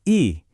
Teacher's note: lidah kamu ada di depan dan di atas kan? Sekarang bilang U.